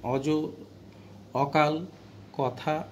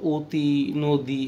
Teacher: এই যে ঠোঁটে কিছুটা সংকুচিত হয়ে আসে, ওই অবস্থাটাকে বলা হয় সংবৃত। অর্থাৎ এই সংকুচিত ঠোঁট দিয়ে যখন উচ্চারণ করি তখন সেইটাকে বলা হয় অয়ের সংবৃত উচ্চারণ। যেমন খেয়াল করো, যেমন অজ, অকাল, কথা, এখানে কিন্তু যেটা আছে সেটা কি তার স্বাভাবিক উচ্চারণ।